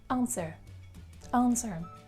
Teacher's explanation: The main mistake here is when you pronounce W, because indeed we do not pronounce it here, and at the end you should have schwa sound, that is this symbol.